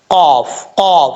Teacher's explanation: قاف حروف مستعلیہ میں سے دو نقطوں والا جو قاف ہے یہ موٹا پڑھا جاتا ہے. اس کا مخرج ہے زبان کی جڑ اوپر والے تالو کے نرم حصے سے لگے تو قاف پڑھا جاتا ہے